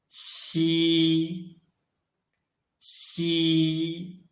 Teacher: Unlike ji and qi, when we read xi, the airflow is not blocked at all